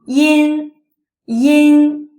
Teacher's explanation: This sound is produced by pronouncing the simple final E followed by the front nasal N. This sound is close to in engage, except the Chinese yin is pronounced with a flatter tongue.